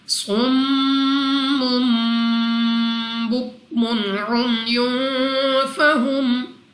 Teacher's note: صاد مستعلیہ میں سے ہے، موٹا پڑھیں گے